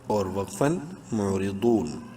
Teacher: ضاد bold proper اپنے مخرج سے، یعنی زبان کی سائڈ اوپر والی ڈاڑوں کی جڑ